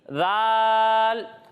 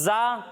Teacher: جب ہم ذال کی ادائیگی کریں گے تو اس میں سیٹی کی آواز نہیں آئے گی، یعنی ذال، اور جب ہم اس کی ادائیگی کریں گے تو اس میں سیٹی کی آواز آئے گی، یعنی زا۔